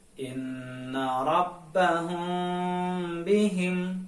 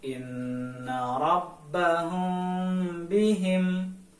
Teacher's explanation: atau terdapat pada huruf mim sukun bertemu dengan huruf ba hai ketika mim sukun bertemu dengan huruf ba maka mim sukun harus dibaca samar-samar tidak boleh dibaca secara jelas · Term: Ikhfa Syafawi